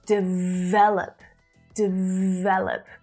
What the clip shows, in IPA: dɪˈ vel.əp